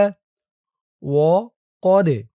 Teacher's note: ذكر اسم الله عليه وقد فصل وقد কফ দিয়ে দাল ধরবে দালটা কলকলার হরফ ধাক্কা দিয়ে পড়তে হবে